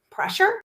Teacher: just the word with my voice going up at the end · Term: rising intonation